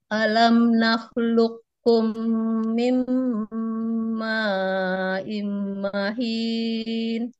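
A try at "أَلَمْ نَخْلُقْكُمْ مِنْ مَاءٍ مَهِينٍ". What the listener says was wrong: Coba di sini Bu, di sini ya idgham bi gunnahnya tahan dulu, jangan tergesa-gesa ya. Mahin, tahan dulu.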